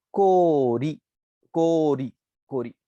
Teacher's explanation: को साउंड जो था आपका वो ओ से प्रोलॉन्ग हुआ है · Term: prolongation of vowels